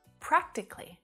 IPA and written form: 'præk tik li (Practically)